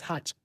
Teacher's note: The Igalas also will say ch, harsh becomes hatch